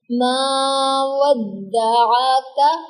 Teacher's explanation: ودعاک، عین اور کاف کی ادائیگی بالکل پرفیکٹ کرنی ہے، ان کے مخارج کو ذہن میں رکھنا ہے. عین کا مخرج وسط حلق سے عین کی ادائیگی ہوگی اور کاف قاف کے مخرج سے ذرا ہٹ کر